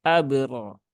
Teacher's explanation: ro yang berbaris fathah plus ada alifnya nah ini berarti dibaca dengan ro yang tebal